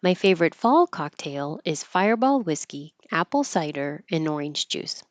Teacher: I'm emphasizing fall compared to favorite because it's more detailed